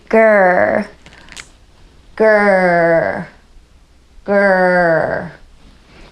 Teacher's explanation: the tongue is not moving very much. It's pretty much staying right in the back there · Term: R sound